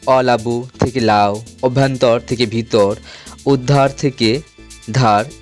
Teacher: এখানে প্রথম ধ্বনিগুলো লোপ পেয়েছে। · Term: আদি স্বরলোপ